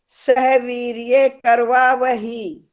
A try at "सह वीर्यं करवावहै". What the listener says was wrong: वीर्य नहीं है, वीर्यम है, द्वितीय विभक्ति एकवचन।